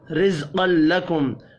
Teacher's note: را کو زیر کی وجہ سے باریک پڑھیں گے، زا ساکن پر قلقلہ نہیں کرنا۔